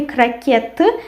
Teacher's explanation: we write T and we pronounce T. And the stress falls on the last syllable.